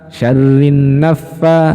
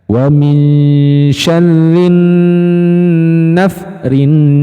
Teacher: Nah, itu kurang lama teman-teman. Jadi nun tasdid itu masuknya gunnah musyaddadah. Jadi dengungannya dipanjangkan.